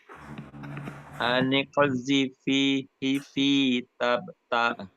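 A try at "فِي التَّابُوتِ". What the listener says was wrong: Enggak boleh fi, tidak boleh. Kan dimasukkan. Tanya juga panjang. Tabuti.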